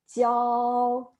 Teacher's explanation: the first tone is the flat tone